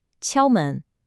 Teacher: The word 敲 has a high, flat first tone.